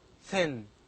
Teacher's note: the tip of the tongue touches the upper front teeth to produce thin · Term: voiceless dental sounds